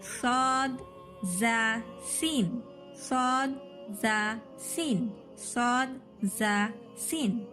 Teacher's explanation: نیچے کے درمیانی دانت کے کناروں سے 3 حروف نکلتے ہیں. نیچے کے جو دانت رہیں گے نا آپ کے، یہ زبان ایسے آئے گی تو نیچے کے جو دانت رہیں گے نا ادھر زبان کی نوک لگا کر کہیں صاد ز سین، صاد ز سین، صاد ز سین. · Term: اصلی کے حروف